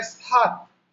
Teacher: हिंदी में हमको बोलना है सात, दंत स का तो सात